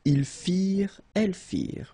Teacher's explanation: ending ENT for the plural, you don't pronounce it.